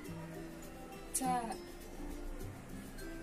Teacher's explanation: The pronunciation is like the English T, except you should release your breath with a strong force of air.